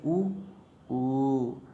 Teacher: ओंठ गोल हो जाते हैं ना, तो इसका उच्चारण स्थान है ओंठों से। और वर्ग पूछे तो ओष्ठ, वर्ग पूछे तो ओष्ठ।